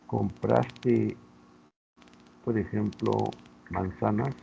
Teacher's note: La respuesta va a ser sí, no. Y además termina con un tono ascendente.